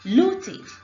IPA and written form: luːtɪd (Looted)